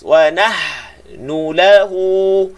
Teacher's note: Ha bunyi panjang tengah halqum, bunyi pedas.